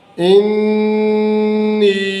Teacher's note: نون شد کی آواز کو ناک میں 2 حرکات یعنی 2 زبر کے برابر ٹھہرائیں گے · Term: غنہ